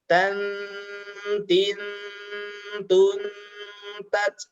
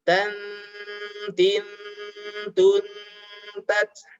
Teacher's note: Ketika disambung, hati-hati ini adalah bacaan ikhfa, ya, bacaan samar yang disertai dengung. Ya, dengungnya lama, 3 ketukan.